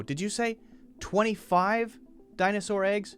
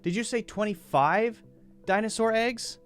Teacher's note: Notice I put the stress on the important number, the thing I want to confirm.